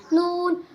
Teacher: জিহ্বার আগা তার বরাবর উপরে তালুর সঙ্গে লাগাইয়া নুন